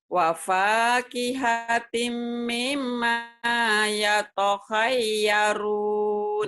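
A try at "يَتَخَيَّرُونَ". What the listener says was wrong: bukan yato, yata khayyarun.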